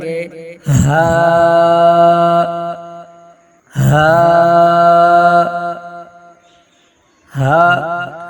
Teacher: حلق کے آخری حصہ سے ادا ہوتا ہے جو سینے کی طرف ہے